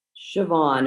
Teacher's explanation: the sh sound and the BH is pronounced with a V